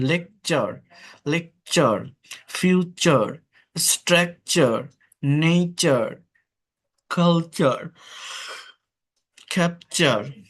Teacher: তো দেখেন, টি plus ইউ, এটার উচ্চারণ চ হয়, চ। টি এর পর ইউ থাকলে এর উচ্চারণটা হচ্ছে চ হয়